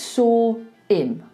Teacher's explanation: often we don't say our H's. So we're taking away that H.